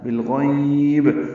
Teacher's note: بالغیب میں لام ساکن پہ اظہار، غین پر غین یا لین اور با ساکن پہ وقفاً قلقلہ ہے